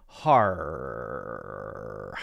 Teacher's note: And so those end of word or word ending or syllable ending R sounds, if it's at the end of the syllable or the end of the word, is going to be more open for British English and more hard for American English, meaning we really stick our tongues up and backward to say that clear R sound